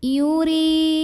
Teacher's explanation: ra ini dibaca dengan tipis. Jadi kita tidak perlu menaikkan pangkal lidah, ringan aja ya. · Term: ra dibaca secara tarqiq